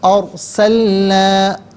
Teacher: را ساکن ہو ما قبل حرف پر زبر یا پیش ہو تو را ساکن کو پر پڑھتے ہیں، زیر ہو تو باریک کر کے پڑھا جاتا ہے۔